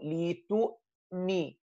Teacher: With the Hamza sakina completely, the sound is cut off.